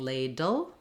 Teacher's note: my tongue is Lifting for the D to the L